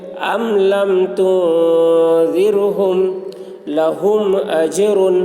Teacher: میم ساکن کے بعد با اور میم کے علاوہ حرف آ رہا ہے، اس لیے میم کو ظاہر کر کے پڑھیں گے، اس کو اظہار شفوی کہتے ہیں۔